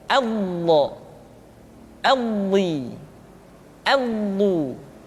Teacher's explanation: Tidak diucapkan do, di, du, tapi lo. Diucapkan dengan menyentuhkan dua sisi lidah kita dengan geraham-geraham atas. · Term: huruf dha